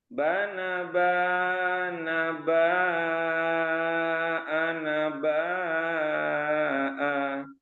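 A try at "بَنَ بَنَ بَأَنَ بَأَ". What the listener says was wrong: Cuman yang ini nih, Mbak, yang ini suka kepanjangan ya. Bana bana ba'ana ba'a. Bana bana ba'ana ba'a.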